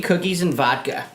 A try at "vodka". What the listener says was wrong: Vodka. I notice how you don't say the D in vodka. Vodka.